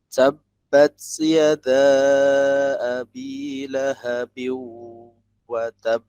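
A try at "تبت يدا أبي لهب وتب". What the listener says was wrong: Nah, awas, hams di huruf ta. Cara membacanya jangan sampai muncul sin. Tabbat. Nah, ini sin nih. Tabbat. Bat. Langsung lepas. Bat. Bukan bats. Nah, ini sin.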